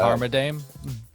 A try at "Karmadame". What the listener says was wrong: Carmadame. you gotta roll your R though. Carmadame.